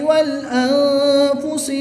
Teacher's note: نون ساکن کے بعد حرف اخفاء میں سے فا ہے تو یہاں پر اخفاء ہوگا یعنی غنہ زمانی کر کے پڑھیں گے